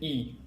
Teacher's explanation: la voyelle i est une voyelle étirée c'est-à-dire que les lèvres sont écarté pour prononcer la voyelle i